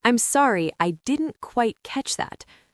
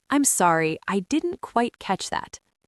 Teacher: The stress goes on the word catch.